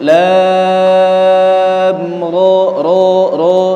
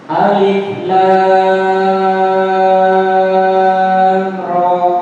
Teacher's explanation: Jadi dari lam ke ra jangan ada jeda, langsung nyambung.